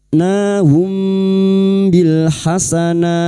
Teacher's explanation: mim sukun kita baca samar dan kita dengungkan selama tiga harakat · Ya, yang tadi mim sukun biasanya dibaca jelas, namun kali ini mim sukun bertemu ba, ikfa syafawi. Mim sukun kita baca samar dan kita dengungkan selama 3 harokat.